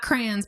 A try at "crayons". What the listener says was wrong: Crayons. It's one syllable.